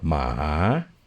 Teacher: From way down low up, that is a dog.